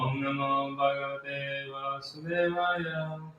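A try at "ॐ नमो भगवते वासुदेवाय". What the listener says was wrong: You know, you kind of speed it up when you repeat. You make it faster. A little bit faster. Better not just do the same speed, okay?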